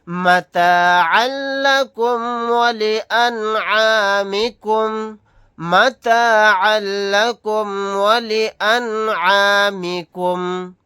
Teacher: نون ساکن کے بعد عین آ گیا، یہاں پر اظہار حلقی کا قاعدہ ہوگا